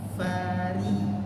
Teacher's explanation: Huruf ra ketika dia kasrah dia tipis.